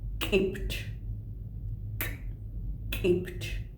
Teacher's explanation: The K with apostrophe, glottalized K